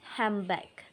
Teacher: The sound n changes into m because of the next uh the next sound b. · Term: assimilation